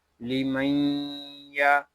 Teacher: یہاں ہم غنہ کریں گے اور غننے کی مقدار 1 الف تک ہوگی۔